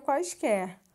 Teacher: O U, nesse caso, tem um som fraco, por isso ele é uma semivogal. O A tem um som mais forte, por isso ele é uma vogal.